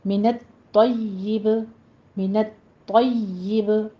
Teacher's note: منت طیب میں طا کے تشدید ادا کرنی ہے، طا کو پر بھی پڑھنا ہے، یا پر بھی تشدید ادا کرنی ہے